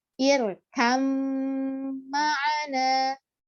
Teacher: irkam ma'ana ini ba sama mim akhirnya hilang ba-nya menjadi irkam. Maka ketika mim ditasydidkan, suara semua gunnah keluar dari hidung dan dia tergolong ke dalam maratibul ula. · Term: idgham mutaqaribain